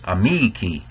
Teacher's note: If the rule of accents is, if the second to last syllable is long, it gets the accent. So in amici, that second to last vowel, E, is long, and so it gets the stress.